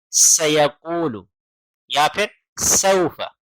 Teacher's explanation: فرق کرنے والی جو چیز ہے وہ ہم نے پہلے بتا دی ہے، یعنی س اور س۔ تو سین میں سیٹی آتی ہے، سا میں سیٹی نہیں آتی